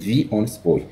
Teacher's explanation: عشان ال H مش منطوقه، فاول حرف هو ال O في النطق فعليا، فبنقول the honest boy زي ما قلنا the مع ال vowel.